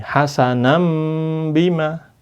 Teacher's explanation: nun sukunnya berubah menjadi mim